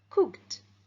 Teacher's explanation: The verb cook ends in the voiceless sound k. So the ed ending sounds t.